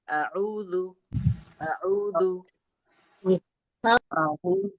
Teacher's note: حمزہ پہ زبر کی حرکت ہے, اسے ہم بالکل بھی نہیں کھینچیں گے. عین پہ واو مدہ ہو رہا ہے, اس کو ہم کھینچ کے پڑھیں گے, اور ذال پہ بھی پیش کی حرکت ہے, اسے ہم بالکل نہیں کھینچیں گے.